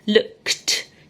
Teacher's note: You can hear a t sound at the end, but yet there's no t.